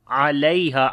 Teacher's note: Ain we read from the middle of the throat.